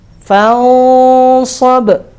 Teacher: Jadinya nyampur antara pengucapan nun dan shad. Separuh di sini, separuh di sini, gitu. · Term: ikhfa hakiki